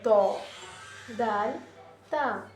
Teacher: जुबान की नोक ऊपर की पिछले वाले हिस्से पर उसके जड़ों पर लगकर अदा होता है।